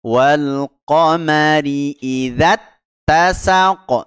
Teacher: Jadi jangan dibaca panjang dulu ya langsung masuk ke huruf ta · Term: musyaddad ghair gunnah